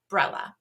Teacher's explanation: they're dropping out one or more syllables from those words um and usually it's the unstressed one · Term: unstressed syllable deletion